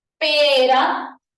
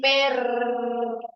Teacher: de la lengua choca una o varias veces en el aviol si choca una vez producirá una vibrante simple pero si choca varias veces en el alveolo O sea la doble r será una vibrante pero de tipo múltiple